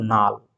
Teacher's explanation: লাল, দুটোই ল ল ছিল, সেখানে হয়ে গেল নাল, একটি ল পাল্টে দন্তেন্য হয়ে গেল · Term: বিষমীভবন